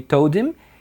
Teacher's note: o D e o T é pronunciado como um R quando tá no meio de vogais ou quando tá no meio de L, R, né?